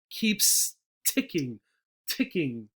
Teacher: The T also here, right, gets breath, a lot of breath. If you put your hand in front of your mouth, keeps ticking, ticking.